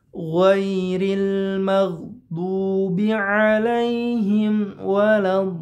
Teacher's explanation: Lamnya harus terasa tasydidnya. Tapi syaratnya satu, tidak boleh ditahan terlalu lama.